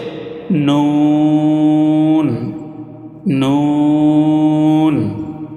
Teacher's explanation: জিহ্বার আগা তার বরাবর উপরে তালুর সঙ্গে লাগাইয়া একটি হরফ উচ্চারিত হয়, সেটা হচ্ছে নুন, নুন।